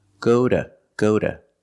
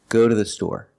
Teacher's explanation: we pronounce Tu as da but this is when two is after a vowel and before a consonant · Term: fast D